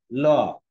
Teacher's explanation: পার্শ্বিক ধ্বনির সংজ্ঞাটা দেখো দেওয়া আছে যে যখন উচ্চারণ করা হবে তখন জিহ্বার অগ্রভাগ আটকে দিতে চাচ্ছে, কিন্তু জিহ্বা খোলা না থাকার কারণে এই দুই পাশ দিয়ে, জিভের দুই পাশ দিয়ে বাতাস বের হয়ে যাচ্ছে। ল, দেখো ল বলতার জন্য আগেই জিভটা আমাদের মূর্ধন্যের সাথে বা কঠিন তালুর সাথে ল আগে থেকে লেগে যায়।